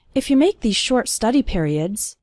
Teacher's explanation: the words if and you are fast. They are just leading up to the word make.